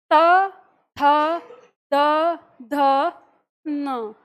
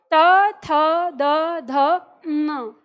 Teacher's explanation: वर्णों का उच्चारण करेंगे तो हमारी जो जीभ है वो दांत को यानी जो दांत का जड़ है या दांत को छूते हुए उच्चारण करेगी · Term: त वर्ग दंत वर्ग